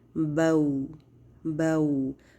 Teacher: वाव लीन की अदायगी के लिए पहले ज़बर के लिए हम मुंह को थोड़ा सा खोलते हैं। ठीक है, यानी ब, और उसके बाद साथ ही हम उसको वाव साकिन के लिए होंठों को गोल कर देते हैं